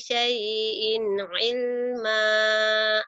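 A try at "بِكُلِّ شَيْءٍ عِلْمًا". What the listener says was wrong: Lagunya udah dapat, tinggal shinnya ya, bikulli syai. Shin. Masih ingat kalau gosok gigi bagian bawah, bagian atas, bibirnya diapain? Dibuka lebar, di syai'in. Bikulli syai.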